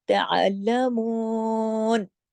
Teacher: واو مدہ ہے 2 حرکات کھینچے گا، جھٹکا نہیں دینا، تعلمون، ٹھیک ہے، اس طریقے سے مون، نون پہ رک جانا ہے، نون کی حرکت پاز ہو جائے گی کیونکہ ہم نا یہاں پر ہماری آیت کمپلیٹ ہوتی ہے۔